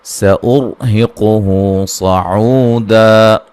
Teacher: را کو موٹا ادا کریں گے، را ساکن سے پہلے پیش ہے، مد اصلی ہے. صاد کو موٹا ادا کریں گے، عو مدہ ہے، دا.